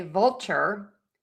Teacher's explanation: your tongue gets kind of close for that L but doesn't touch the whole way. That's a dark L.